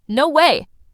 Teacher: Surprise goes up fast.